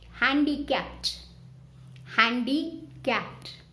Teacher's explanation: Handicapped. Handicapped. Only one P sound is coming.